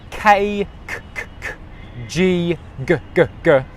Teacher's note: the back of my tongue comes to the back of my mouth and it actually touches the back of my mouth. It touches the back of the soft palate at the back there. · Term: K sound